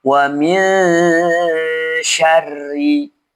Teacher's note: dibaca ghunah dengan cara menyamarkan bunyi huruf nunnya dan diarahkan ke huruf setelahnya posisi lidah di bawah